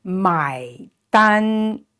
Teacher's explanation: the first tone is flat, keep it flat